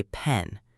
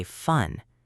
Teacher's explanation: Put your hand near your mouth and say pen. You should feel a little puff of air. Now say fun. You should feel a longer stream of air.